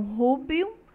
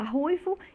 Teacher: as consoantes oclusivas no latim b passou a uma fricativa sonora bilabial em português, o v. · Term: enfraquecimento